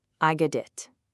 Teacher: When a T sound is between two vowel sounds, like the O in got and the I in it often changes to a soft D sound. We call this a flap T.